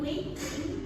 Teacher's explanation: So the G sound in waiting is dropped entirely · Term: elision